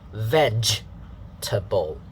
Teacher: The first syllable is veg, ending with the J sound, the J sound.